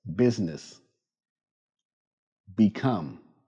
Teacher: With the B sound, use your voice.